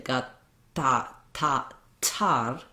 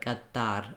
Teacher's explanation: they don't use a burst of air in the middle, so they don't say ga, ta, ta, tar with a t sound like we. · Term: unaspirated T